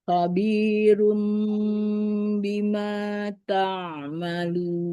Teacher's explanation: merubah nun sukun atau tanwin menjadi bunyi huruf mim sukun disertai dengan gunnah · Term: iklab